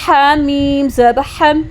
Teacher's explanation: ہا کو گلے کے درمیان سے مڈل تھروٹ سے ادا کریں گے، ہا میم زبر ہم، میم کو ساکن کر کے پڑھا۔